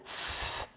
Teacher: f, c'est une consonne qu'on dit sourde. Ça veut dire qu'il n'y a pas de vibration des cordes vocales, f, mais ça reste un son qui souffle.